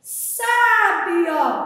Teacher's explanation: Abriu o som da vogal A. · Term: acento agudo